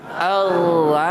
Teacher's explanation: Hamzah ni kena jaga, sempurnakan bunyi Hamzah. Hamzah di atas. Betul-betul tahan, syiddah, tertahan suara.